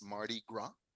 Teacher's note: que no pronunciamos la S, es un festival francés